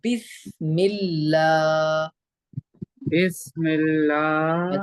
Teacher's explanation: मजूल नहीं पढ़ना है मोटा नहीं पढ़ना है बारीक पढ़ना है